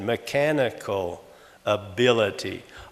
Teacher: Now, what I really said was mechanical ability, but the general accent or tone pattern on both of those words, they're both four-syllable words, and generally the second syllable is stressed or accented